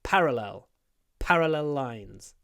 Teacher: parallel stress on the P parallel lines two parallel lines so we get a little pause before the P · So we get a little pause before the pa.